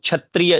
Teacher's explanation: क्ष तो आधा क और तालव्य श के मिलने से बनता है वो